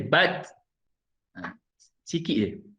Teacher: Dia punya sifat hamas, sifat angin dia keluar sikit. Bat, bukan bat, dia tak, bukannya keluar banyak angin tu, sikit saja.